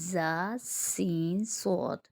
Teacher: تھوڑی سختی اور زیادہ ہوتے ہیں اور ان میں سیٹی کی آواز آتی ہے۔ ان کا مخرج ہے زبان کی نوک نیچے کے 2 دانتوں کی جڑ سے لگی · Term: سیٹی والے حروف